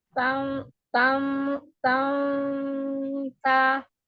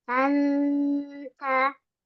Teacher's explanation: lidahnya itu ditaruh di posisi di huruf ta, di tempat tumbuhnya gigi seri ya, ujung lidah